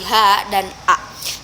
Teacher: yaitu bunyi dari pangkal tenggorokan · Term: gotal